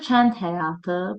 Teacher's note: Burada kənd həyatı burada d samiti t kimi tələffüz edilir · burada d samiti t kimi tələffüz edilir, amma ikinci sözümüz olduğu kimi tələffüz olunacaq.